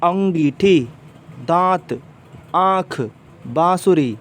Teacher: अंग या इसके मात्रा रूप को बोलने पर ध्वनि नाक और मुंह दोनों से निकलती है, जैसे अंगीठी, दांत, आँख, बांसुरी। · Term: अनुनासिक ध्वनि